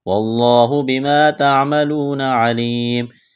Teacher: لفظ اللہ کے نام سے پہلے زبر ہے تو لفظ اللہ کے نام کو موٹا کرنا ہے